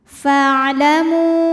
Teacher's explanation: Nah, ini alifnya ini bukan pemanjang, bukan mad ya, melainkan ini adalah hamzah wasal. Jika di tengah hamzah wasal tidak dibaca. Jadi fa pendek. Fa'lamu. Mu ada mad jaiz munfasil.